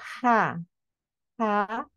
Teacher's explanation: ketika kita mengucapkan huruf H harusnya di pertengahan tenggorokan kita terasa keluarnya dari situ jika tidak keluar dari situ berarti kurang pas cara